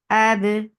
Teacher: Ba will get sifa of qalqala. And qalqala is tabaud.